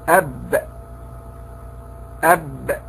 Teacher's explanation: ومعنى الشدة أنه لا يجري معه الصوت عند نطقنا بهذا الحرف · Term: حرف شديد